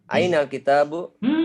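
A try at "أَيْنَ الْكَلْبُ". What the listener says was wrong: Masa kita, Bu? Ini lam.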